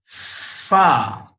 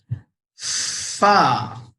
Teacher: होंठ का अंदर का हिस्सा, बाहर बाइट नहीं करेंगे, ऐसे नहीं करेंगे। होंठ के अंदर वाले हिस्से पे ऊपर के दांत को रखेंगे और एयर ब्लो करेंगे।